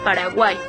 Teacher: es la unión de tres vocales en una misma sílaba. Aquí, si es en una misma sílaba, lo más seguro es que encontremos vocal eh cerrada, vocal abierta, vocal cerrada, como en el caso del ejemplo que tenemos aquí, que es Paraguay. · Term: triptongo